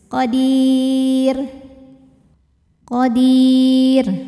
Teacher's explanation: karena huruf sebelumnya Ya Sukun maka otomatis rnya tipis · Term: tarqik, tartik